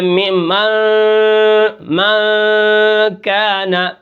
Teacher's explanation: اخفاء ہوتا ہے، ہم ناک کے اندر آواز کو چھپاتے ہیں